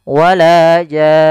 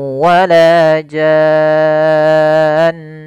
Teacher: Nah, di sini mad arid sukun yang asalnya mad lazim. Mad lazim itu di dalam bacaan tajwid itu kita panjangkan enam harakat. Maka di sini janya-nya panjang dulu.